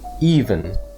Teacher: The emphasis in this word is on the first syllable